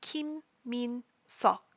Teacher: you pronounce the EO sort of in the back of your throat. It's not an O, it's not an ah, it's an O.